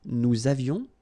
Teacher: Nous avions, little liaison, final S not pronounced